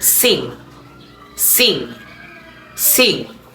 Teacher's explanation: the N fronted after front vowel like sing, sing, sing